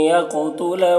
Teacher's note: قاف کو پر پڑھنا ہے اور قلقلہ کرنا ہے